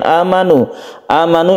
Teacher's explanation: kemudian amanu amanu ini adalah mad badal a-nya ini kita panjangkan satu Alif saja kenapa dipanjangkan Karena itu adalah Badal atau pengganti dari Hamzah yang